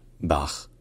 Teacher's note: un petit peu comme un R français, mais sourd. Donc les cordes vocales ne vibrent pas.